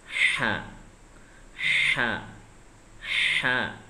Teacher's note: lidah paling pangkal dekat kerongkongan itu disempitkan supaya bisa menghasilkan suara yang tipis